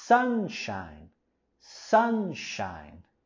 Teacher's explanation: en la palabra sunshine, igual queremos subir la voz y entonación en la primera sílaba. Sunshine, sunshine.